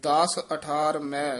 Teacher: ਮੈ ਨਾਸਕੀ ਨਹੀਂ ਉਚਾਰਨ ਕਰਨਾ